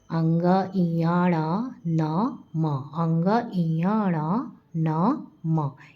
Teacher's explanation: यह अनुनासिक भी कहे जाते हैं क्योंकि इनका उच्चारण मुंह और नाक से होता है